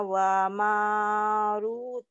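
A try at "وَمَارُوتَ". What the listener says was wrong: Rota, ronya panjang. Haruta wa Maruta. Haruta wa Maruta.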